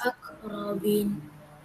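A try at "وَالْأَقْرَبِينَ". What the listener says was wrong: Bin panjang sedikit. Wal aqrabin.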